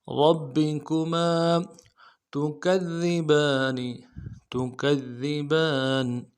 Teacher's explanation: میم کے ساتھ الف مدہ ہے، ایک الف مدار میں کھینچیں گے